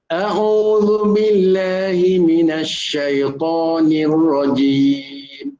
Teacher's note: Jadi tu datang daripada pangkal kerongkong, hamzah tu ya. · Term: suara hamzah